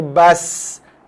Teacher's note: Kalau kita baca bas, hujung lidah kita dah sentuh belakang gigi bawah. Itu adalah rumah huruf sin.